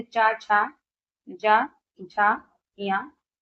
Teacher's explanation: तालु से उच्चारित होने वाले व्यंजन की बात करें तो चा वर्ग के सभी हो जाएंगे